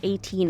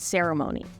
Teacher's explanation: while 18 has its emphasis on the last syllable ceremony has its emphasis on the initial and second to last syllable